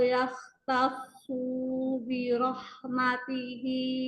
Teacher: Huruf shad nggak panjang, sempurnakan tasydid pada shad biar nggak terbaca panjang.